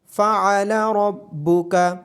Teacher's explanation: عین کی آواز گلے کے درمیان سے آئے گی اور را کو موٹی آواز کے ساتھ پڑھا جائے گا۔